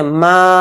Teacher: ما کو یہاں پر ایک الف کی مقدار ہم کھینچیں گے، ما اتنا۔ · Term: الف مد